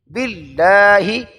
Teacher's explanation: لفظ اللہ سے پہلے زیر آ گیا لہذا موٹا نہیں کرنا۔ باللہ ہی غیر مدہ، جلدی سے یہ نہیں پڑھنا۔